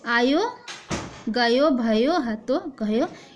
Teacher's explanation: ब्रज भाषा में ओकारांत की प्रवृत्ति पाई जाती है